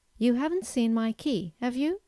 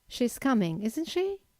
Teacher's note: the first usage of a question tag is to formulate a simple yes-no question, but in this case, you have to use a rising intonation